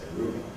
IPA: ˈruːbɑːb